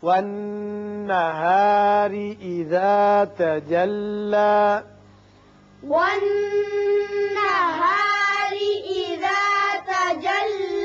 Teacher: نون مشدد ہے، غنہ ہوگا. را کے نیچے زیر ہے، اس کو باریک پڑھیں گے.